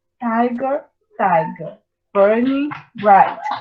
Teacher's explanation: E a gente diz que ele é trotaico, que significa que ele tem uma sílaba átona, uma sílaba tônica e uma sílaba átona. Ou seja, a gente tem stressed, unstressed, stressed, unstressed, stressed, unstressed